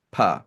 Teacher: So in principle, there could be an unvoiced ba, which is called a pa.